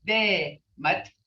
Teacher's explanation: So you say day, it's day, mut, because this T's got a D sound.